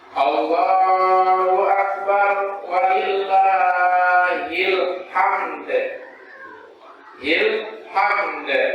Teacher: Maka ketika kita mengumandangkan takbir itu, dimuliakan oleh Allah SWT, huruf mim di alhamdu itu disukunkan, kemudian huruf dal yang di akhir itu juga disukunkan. Maka ketika huruf dal itu disukunkan, dia menjadi qalqalah atau memantul · Hamd. Jadi huruf mimnya dia sukun dan huruf dalnya juga sukun, dan huruf dalnya itu dikolkolahkan